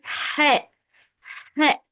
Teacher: It's coming from the middle of the throat. Look at your throat and put your finger in the point in the middle of your throat and say if you feel a vibration in the middle of your throat, so you read good, you read right.